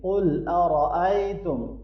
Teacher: قاف اور را دونوں موٹا پڑھیں گے، یا لین ہے، اس کو نرمی سے پڑھیں گے۔